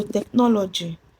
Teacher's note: So the stress is on the third syllable, counting from the ending. So the stress in technology is on NO.